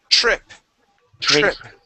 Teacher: when we pronounce that TR, okay, I want you to think of a CHR sound. So instead of saying trip, trip, okay, it is trip. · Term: TR sound